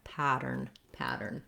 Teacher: a stressed syllable in this word americans will flap this t basically it sounds almost the same as a d we're just lifting the tongue up the voice is on a nice light d sound